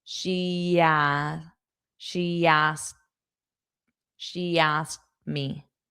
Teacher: you can add a Y sound to connect two vowels.